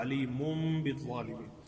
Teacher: جب نون ساکن کے بعد با آ رہا ہو تو نون کی آواز کو میم میں تبدیل کر دیں گے · تو میم کو براہ راست میم کے ساتھ ملا دیا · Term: اقلاب